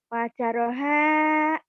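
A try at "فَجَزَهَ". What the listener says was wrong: ada titiknya, Bu. Pajaroha baik si Ibu mah. Ada titiknya, zainya. Itu zai, bukan tro. Fajazaha.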